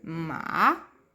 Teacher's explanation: O terceiro tom, na minha opinião, ele é o mais engraçado de se fazer, que ele é um tom que vai deixar a nossa voz um pouquinho mais rouca. Ele é um tom que ele vai começar médio, vai descer e vai subir de novo.